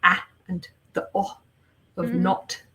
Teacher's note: america doesn't really have the short vowel sound that is typical in a lot of uh british pronunciation